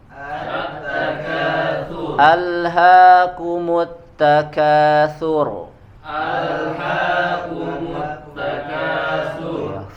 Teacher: Sur di situ ro tebal, ya karena sebelumnya berharokat dhammah